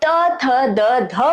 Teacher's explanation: और जब हम त, थ, द, ध बोलते हैं तब जीभ दांत पर लगती है।